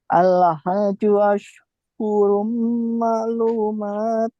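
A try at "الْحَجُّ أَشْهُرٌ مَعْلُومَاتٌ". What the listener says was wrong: Di huruf jimnya tahan dulu ya. Al-hajju ashhurun.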